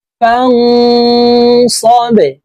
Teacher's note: বা কলকলার হরফ নিচের দিকে ধাবিত করে ধাক্কা দিয়ে উচ্চারণ করব।